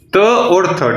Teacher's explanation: दोनों ही आपके दंती व्यंजन है